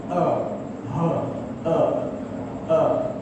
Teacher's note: Kemudian di pangkal halqum iaitu 2 huruf iaitu ha dan juga a.